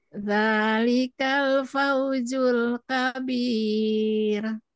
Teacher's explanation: Nah, itu ya, ditipiskan ya. Karena sebelum mad itu kasrah ya, maka ro-nya jadi tipis.